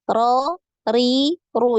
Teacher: Ini kan getarannya sekali ya